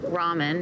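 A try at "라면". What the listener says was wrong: Ramen is more of a Japanese pronunciation. In Korea, it's more ramyeon. So think of it with a Y in between the M and the E-O-N.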